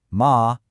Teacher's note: With a high flat first tone, ma, it's mother.